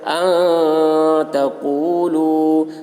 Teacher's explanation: نون ساکن کے بعد حروف اخفا میں سے تا آ رہا ہے، اس لیے نون کی آواز کو ناک میں چھپا کر پڑھیں گے